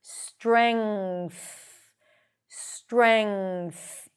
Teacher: Ng sound. and then push the tongue out for the th